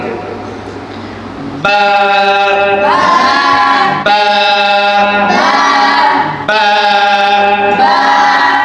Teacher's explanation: দুই ঠোঁট মিলান, একসাথে মিলান, একসাথে করেন দুই ঠোঁট, একদম আবার অনেকে চাপ দিয়ে করেন না।